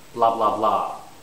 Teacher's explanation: stress is on the last blah you have to say it three times